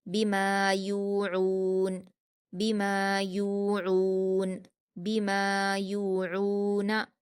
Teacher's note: औहालहा, औहालहा बिमा यूऊन, बा पर हरकतें जल्दी पढ़ेंगे। मीम पर अलिफ मद्दा है 2 हरकत खींचकर पढ़ेंगे। या पर वाव मद्दा है 2 हरकत खींचेंगे।